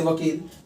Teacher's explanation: व से वकील जिसका उच्चारण स्थान दंत और ओष्ठ होता है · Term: दंतोष्ठ्य